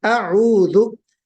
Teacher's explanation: یعنی پہلے حمزہ ہونا چاہیے، حمزہ بالکل واضح، پھر عین کی آواز آنی چاہیے